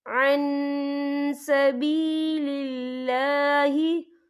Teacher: ان الذین کفروا وصدوا عن سبیل اللہ، یا دیکھیں عن، یہاں نون ساکن ہے، نون ساکن کے بعد جو ہے سین آ رہا ہے، اور سین جو ہے اکفا کا ورڈ ہے، تو ہم یہ اکفا کریں گے، نون ساکن کی آواز کو ناک میں چھپائیں گے